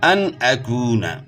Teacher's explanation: نون ساکن ہے، لیکن اس میں جو ہے نا ہم نے غنہ نہیں کیا، کیونکہ نون ساکن کے بعد حروف حلقی میں سے حمزہ آ گیا، تو اس لیے یہاں غنہ نہیں ہوگا۔ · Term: اظہار